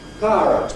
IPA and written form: ˈpaərət (Pirate)